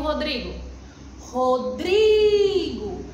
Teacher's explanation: Quando você vai chamar um amigo Rodrigo, Rodrigo, você pronuncia mais a sílaba dri. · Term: sílaba tônica